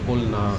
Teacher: اور لام کا نون میں نہیں ہوتا, یہ خلاف قاعدہ ہے.